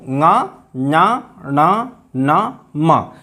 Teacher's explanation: इन पांचों का उच्चारण मुख और नासिका दोनों से होता है। नासिका, नासिका मतलब नाक, इसीलिए इनको अनुनासिक कहते हैं।